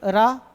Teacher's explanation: लुंठित व्यंजन लुढ़कती हुई लगती है